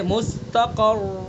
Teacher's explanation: مستقر را کے اوپر دو پیش ہیں، تو اگر ہمیں یہاں پر روم کرنا ہے تو روم کا مطلب ہے کہ اس کا حرکت کا تہائی حصہ ادا کرنا ہے، تو ہم یہاں ایک پیش پڑھیں گے یا دو پیش پڑھیں گے. تو روم کی حالت میں صرف ایک پیش کا تہائی حصہ ادا کریں گے